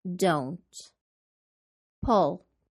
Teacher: Because we are contrasting the verbs push and pull, we add extra emphasis to pull. This way, the listener will really hear that we are calling attention to the difference between push and pull.